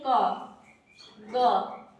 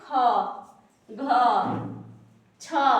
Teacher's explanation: अल्पप्राण साड़ा में कह सकते हैं कि जिसका उच्चारण में समय कम लगता है